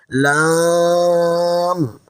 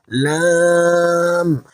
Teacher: লামের মাখরাজ হলো জিহ্বার আগার কিনারা উপরের সামনের দাঁতগুলোর গোড়ার মাড়ির সাথে লাগবে।